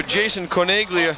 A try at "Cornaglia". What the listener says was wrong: Cornelia. It doesn't sound like it's spelled. G. There is a G, but there's no G pronounced. Cornelia.